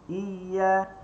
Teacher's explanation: Dia bukan syiddah. Dia rakhawat. Maka dia tak bertemu tengah lidah kita dengan langit.